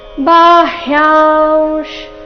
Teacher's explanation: ಬಾಹ್ಯಾಂಶ್ ಯಾ ನಂತರ ಬಂದಿರೋ ಅನುಸ್ವಾರದ ಉಚ್ಚಾರಣೆ ಅನುನಾಸಿಕ ವ ರೀತಿ ಬರಬೇಕು.